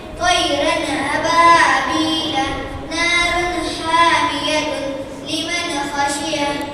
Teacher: تنوین یا نون ساکن کے بعد حروف حلقی میں سے کوئی حرف آئے تو نون کو ظاہر کر کے بلا غنہ کے جلد پڑھیں گے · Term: اظہار